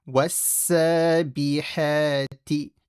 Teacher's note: Make the ha from the middle of the throat.